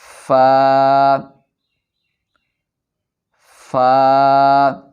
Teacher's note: فا کو پڑھتے وقت اوپر کے دانتوں کے کنارے نچلے ہونٹ کے گیلے حصہ سے ملائیں گے۔